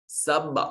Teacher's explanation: سب با ساکن ہے اور ما قبل مفتوح ہے، اور با حرف قلقلہ ہے، اس لیے یہاں آواز اپنے مخرج پر لگ کر ٹکرا کر واپس پلٹے گی